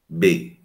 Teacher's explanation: consoante oclusiva bilabial sonora